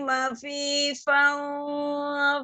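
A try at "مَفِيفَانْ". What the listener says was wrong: baca mafifan, ya di situ mafifan, itu tadi giginya nempel nggak ke bibir? Tadi enggak. Tadi enggak.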